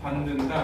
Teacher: 디귿이 니은 만나면 디귿에 해당하는 비음으로 바뀌는 거야. 반으로. 받는다 이렇게.